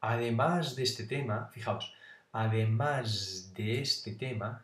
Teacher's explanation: fijaos además de este tema esa s cuante de una d esa s es una s Sonora